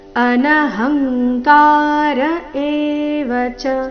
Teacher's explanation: ಅನಹಂಕಾರ ಹ ಮೇಲೆ ಆಘಾತ, ಏವ ಚ ಕೊನೆಗೆ ಚ ಹ್ರಸ್ವ.